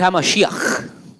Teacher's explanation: eso es una guttural, eso es una que se tiene que usar así como que tienes flema